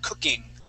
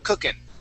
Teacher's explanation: I do not pronounce the G at the end, and it's more of an N sound